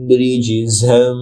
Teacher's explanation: রিজ র জিমের সাথে যুক্ত হবে, জিমের উচ্চারণ শক্ত হবে এবং জিমে কলকলা হবে